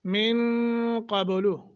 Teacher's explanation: ہوا سما، میم مشدت غنہ کریں گے، المسلمین، من نون ساکن کے بعد قاف ہے، یہاں اخفا کریں گے